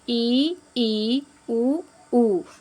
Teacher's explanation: संवृत का मतलब है थोड़ा सा संकुचित, थोड़ा संकुचित ना, उसको मतलब संकुचित ही समझिए संवृत का अर्थ। तो ई जब हम कहते हैं तो बहुत संकुचित मुँह रहता है ना, तो ई उ क्या है, संवृत स्वर हैं।